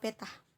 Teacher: T ini termasuk dalam bunyi apikoalveolar, bunyi hambat dan tak bersuara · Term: bunyi T